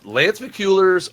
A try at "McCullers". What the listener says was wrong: It's McCullers, by the way. I think it's just whenever you see a U, like you automatically go ooh.